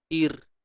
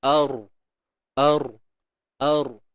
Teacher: Jadi disebabkan ada huruf yang berbaris atas sebelum ra ni tadi, ra mati ni, maka dibaca dengan tebal. Kalau sebelum ra baris bawah, baca nipis. Ir. Kalau baris atas, ar.